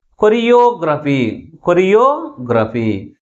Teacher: third syllable మిగిలిన syllables కంటే ఎక్కువ ఫోర్స్గా పలుకుతుంది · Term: ప్రైమరీ స్ట్రెస్